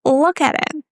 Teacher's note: in the preposition at, again, we have a flap T sound because here are the T's between two vowels.